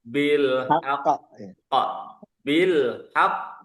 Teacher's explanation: Jangan haqq langsung. Kasih tempo 2 harokat.